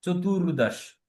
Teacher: এখানে যেহেতু রেফ আছে উচ্চারণটা ভাইব্রেট হবে